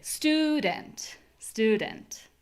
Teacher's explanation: The next way is by making the vowel higher in pitch. So, my voice is like on a higher octave somehow when I say student.